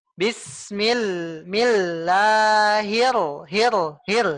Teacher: tasdid ni ya tolong ditekan satu harakat ya jangan setengah harakat